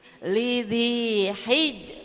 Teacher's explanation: Karena jimnya itu qalqalah ya Bu ya. Jadi ada pantulan dulu, pantulan yang lemah